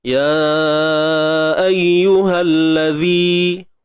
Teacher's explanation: Huruf zal keluarkan hujung lidah sedikit sahaja. Itu makhraj bagi huruf zal. Panjang pula 2 harakat.